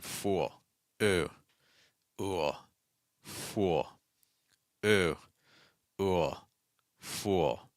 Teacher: we have to have that separation between the oo sound and the L this is because the oo sound is considered a long vow